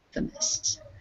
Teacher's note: the emphasis is on the in Infamous